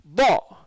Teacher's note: நுனி நாக்கு நுனிப்பல்ல படணும்